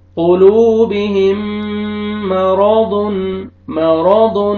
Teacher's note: واو مد ہے، واو سکون سے پہلے ضمہ، آپ نے لام کو کھینچنا ہے، را کو فتح ہے، را کو موٹا کر کے پڑھیں گے.